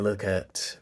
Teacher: I did a schwa at instead of at, because I just did it in the unstressed position